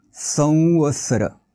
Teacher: अनुस्वाराच्या समोर व आलाय, म्हणून अनुनासिक वचा वापर करायचा आहे. उच्चार होईल संवत्सर.